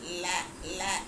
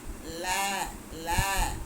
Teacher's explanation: இந்த பல்லுக்கும் அன்னத்துக்கும் ரெண்டும் தொடக்கூடிய இடத்துல ல போய் நிக்கணும் அங்க ஒரு ஒரு செகண்ட் நிக்கணும் ல ல அப்படி சொல்லணும் ல அப்படின்னு